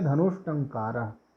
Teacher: ट ठ जहाँ पे हो वहाँ पे क्या हो जाएगा? मूर्धन्य सा हो जाएगा, मूर्धन्य सा हलंत के साथ में।